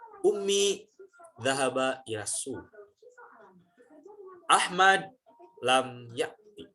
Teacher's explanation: Dan di tengah-tengah sebelum diakhiri kalimat itu, nadanya itu diturunkan. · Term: sendi kepang rangkap